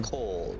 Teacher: Where I live in South Africa, we pronounce our A's very low.